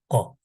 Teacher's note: Kaf harfi kalın bir harf o Türkçedeki g gibi biraz daha sert bir şekilde